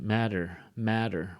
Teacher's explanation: English they would say what is the matter maybe in uh in California English that t becomes a D